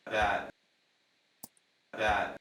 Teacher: my lips joining for the B in bat